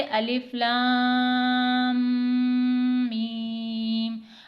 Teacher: جیسا کہ آپ جانتے ہیں کہ حروف مقطعات کو توڑ کر پڑھا جاتا ہے، یعنی انہیں ملا کر نہیں پڑھا جاتا، تو اسی لیے الف کے بعد لام کے اوپر مد ہے، تو لام کو ہم 5 حرکت کے برابر کھینچ کر پڑھیں گے